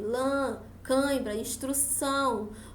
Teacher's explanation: Como vocês podem observar, lã, quando eu pronuncio a palavra lã, tem esse som nasal aí, lã, cãibra, instrução. Tudo isso tem um som mais fechado, tem um som nasal que sai mais pelo nariz.